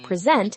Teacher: When we stress the second syllable, present, it's a verb meaning to show or introduce.